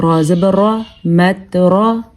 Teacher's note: را پر ہونے کی وجہ سے اس کو ہم پر پڑھیں گے کیونکہ را کے اوپر زبر ہے۔ باقی تا پہ کوشش کیجیے گا کہ جھٹکا پیدا نہ ہو، کیونکہ تا حروف قلقلہ میں سے نہیں ہے۔